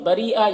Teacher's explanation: را کو باریک پڑھنا ہے ، اور یہ جو مد ہے مد متصل ہے اسے 3-4